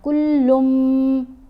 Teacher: لام کو جب ہم نے میم سے ملانا ہے تو گننا کرتے ہوئے ملانا ہے، کلن نہیں پڑھنا، کلم.